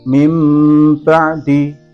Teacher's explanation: menukar bunyi nun sukun atau tanwin menjadi bunyi mim mati atau mim sukun disertai dengan dengung. Huruf iqlab hanya ada satu, yaitu huruf ba.